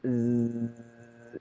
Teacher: Huruf zai andaikan tasdid maka dia akan terus terucap